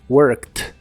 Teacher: La ED del final de esta palabra se pronuncian como T, worked. Worked.